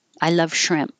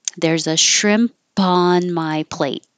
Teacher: you just close your lips and you don't hear the P. But if there's a vowel after it, you will hear the P.